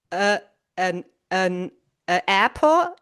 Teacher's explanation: The N is linked to the A in apple. So this essentially becomes one word. So the last sound of the first word becomes the first sound of the la of the second word.